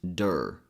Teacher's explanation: Again, a very relaxed sound. The D sound is pronounced with the tip of the tongue touching the front roof of the mouth. We also call this part the hard palate.